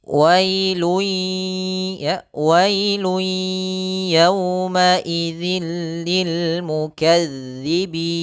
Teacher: Wailun awalnya kita ganti dengan wailui, sambil kita masukkan ke rongga hidung kita. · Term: idgham bi gunnah